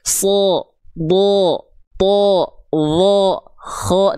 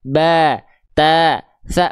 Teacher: yang tebal itu ketika dia berharakat fathah enggak kedengaran vokal a tapi dia akan condong seperti vokal o